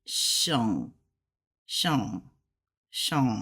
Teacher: you don't really pronounce that G I don't hear that g